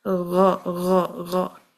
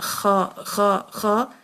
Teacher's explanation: गैन और खा थोड़ा ऊपर जाएंगे तो यहाँ से अदा होगा अग अख, इस तरह भी करेंगे तो आपको आइडिया हो जाएगा कि यहाँ से ये अदा होता है। गैन थोड़ा बिल्कुल एंड पे, युवला के बिल्कुल एंड पे टच करती है हमारी ज़ुबान, और खा थोड़ा सा उसके ऊपर होता है।